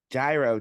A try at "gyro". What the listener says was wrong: Pretend there's no G. The G is silent.